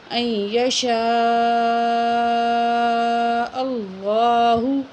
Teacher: کر کے پڑھیں گے کیونکہ اللہ سے پہلے زبر ہے اور یہاں یہ بڑی مد ہے، چار الف کے برابر کھینچ کے پڑھیں گے ، اور حمزہ زبر این یشاء، یہ جو ہے حمزہ کو · اللہ کو ہم موٹا کر کے پڑھیں گے کیونکہ اللہ سے پہلے زبر ہے